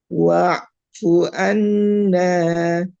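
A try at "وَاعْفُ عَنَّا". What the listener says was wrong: Annya tahan. An ditahan.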